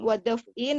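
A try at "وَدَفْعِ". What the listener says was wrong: Jangan ditanwinin. Wadaf'i, mudaf ya, wadaf'i sama niha.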